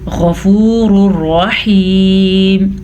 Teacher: ویسے یہ تھا غفور رحیم, لیکن ادغام بلا غنہ ہونے کی وجہ سے ہم اس کو پڑھیں گے غفور الرحیم